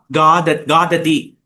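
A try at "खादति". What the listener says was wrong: அது கான்னு சொல்லக்கூடாது, காததி. கபிஹி காததி.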